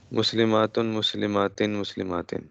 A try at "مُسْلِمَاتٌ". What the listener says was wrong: یہاں پہ خیال کرنا ہے، ٹھیک ہے، یہاں پہ لمبا ضرور کرنا ہے، کیونکہ اگر لمبا نہیں کریں گے تو پھر اس میں اور اس میں کوئی فرق نہیں رہے. مسلمات بے شک تھوڑا زیادہ لمبا کرنا، مسلمات مسلمات